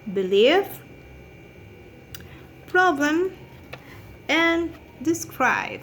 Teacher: The manner of articulation is stop. You know, we have a complete obstruction of the outgoing airstream. · It's a bilabial because we have contact in the upper and lower lips.